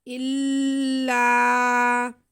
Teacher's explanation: حمزہ کو لام کے ساتھ تھوڑا سا رک کے ملائیں گے، الا، تاکہ ہماری شد بھی ادا ہو جائے، اور لام کو کھینچیں گے تو ہمارا الف مدہ بھی ادا ہو جائے گا۔